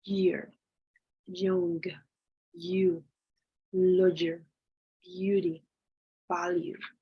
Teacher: This symbol is known as the yot or yot. It's voiced because it's a palatal because your tongue goes up to the palate. It's an approximant, and it's oral because the air flows over your mouth.